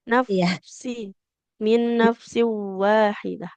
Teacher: Jadi dia fa itu mengalirkan suara dan juga nafas.